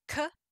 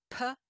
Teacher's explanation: ka is pronounced towards the back of throat pa is pronounced on the lips